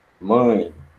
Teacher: quando o ar sai pela boca e pelas fossas nasais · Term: nasal